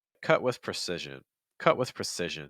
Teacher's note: what's happening is you are not releasing the breath on the T sound however that does not mean that the breath is going to stop completely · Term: held t